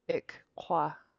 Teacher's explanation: your tongue will touch the top of your mouth once to make a K and then it'll kind of touch it in the back of the tongue again to make a different K. You need to let that little puff of air come out in between them. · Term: two K's